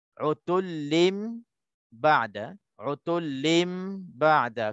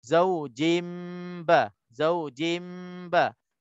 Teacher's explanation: Maka kita tukarkan nun mati menjadi mim. Tanwin itu menjadi mim. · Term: iqlab